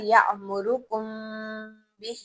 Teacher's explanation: मीम साकिन के बाद बा है तो हम गुनगुनाएंगे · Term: गुनगुनाहट